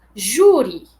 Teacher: esse I final também é átono, então nós também tratamos ele de uma forma diferente do I tônico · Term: I átono